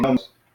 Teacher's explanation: the accent is on the first syllable, so we say nomos.